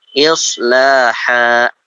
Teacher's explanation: Tanwin yang diperhentikan kemudian dibaca satu jadi ha. Tidak han tapi ha. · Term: mad iwad